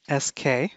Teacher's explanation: k is a voiceless stop that's a level of one and s is a voiceless fricative that's a level of three